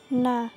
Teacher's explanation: Dibaca jelas, antara keras dan lunak, merendah, terbuka, dan dengung. Makhraj huruf nun terletak pada dari ujung lidah dan gusi yang sejajar dengannya, disertai dengung dari rongga hidung. Adapun cara mengucapkannya seperti huruf N atau bisa kita ucapkan na.